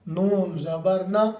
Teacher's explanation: लाम के मखर के साथ ही अगले हिस्से से ऊपर के तालो के साथ लगकर नून निकलता है